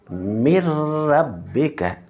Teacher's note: را اور لام میں بغیر گنہ کے مدغم ہوگا